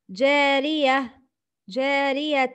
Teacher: The reader should stop on تا مربوطة and pronounce it like ها with ساكن. With سكون. Example.